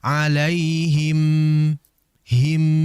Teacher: Akan tetapi kurang sempurna karena mim ini memiliki sifat ghunah dan memiliki sifat yang mengalir tidak begitu lama yang disebut dengan tawassut. Maka dialirkan tidak begitu lama disertai dengan dengungan.